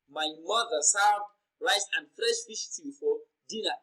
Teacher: remember mother is the emphasized word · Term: emphatic stress